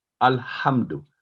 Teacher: نہ تو دو کی آواز لمبی کرنی ہے, نہ ہم کو لمبا کرنا ہے, نہ ال کو لمبا کرنا ہے. الحمد, تینوں ساؤنڈ جو ایک ایک سیکنڈ لیں گے.